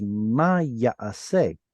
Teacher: This noon disappeared in most places in Hebrew. This is preserving the missing noon.